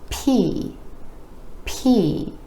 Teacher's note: You want to make sure you have that air puff or else it might sound more like B.